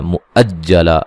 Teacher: حمزہ کو تحقیق سے پڑھیں گے اور حمزہ کو جیم سے سختی سے ملائیں گے۔ وقفاً الف مدہ میں تبدیل کریں گے.